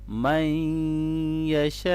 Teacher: من یشاء، من یشاء نہیں ہے، من یشاء ہے، نون ساکن کے بعد آگے یا ہے، حروف یرملون میں سے، تو یہاں پر ادغام مع الغنہ ہوگا